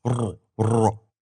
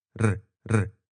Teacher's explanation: In terms of tongue position, the first one has the back of the tongue pulled further back in the mouth, kind of like you do with Arabic's emphatic consonants.